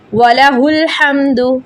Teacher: حمد میم پہ غنہ نہیں ہوگا ادھر